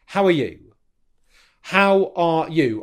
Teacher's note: I'm using the rhythmic reduced form of are